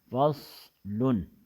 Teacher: صاد میں اسمات ہے، اسمات، یہ صاد مضبوطی سے ادا ہوتا ہے